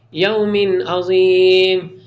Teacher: تنوین ہے لیکن اس کے بعد حروف حلقی میں سے عین آ رہا، اظہار ہوگا، کلیئر ریڈ کریں گے